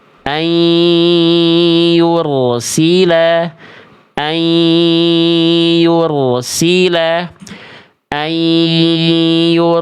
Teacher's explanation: nunnya udah dileburkan ke ya, udah lebur, lalu didengungkan plus ditahan 2 harokat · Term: idgham biguna